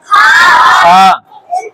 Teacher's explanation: अदना हलक का यानी हलक मुंह की तरफ वाला हिस्सा